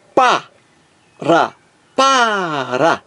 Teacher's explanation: eu digo para o Ra é fraco ó pa ra para o mais forte aqui é a primeira sílaba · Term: acento tônico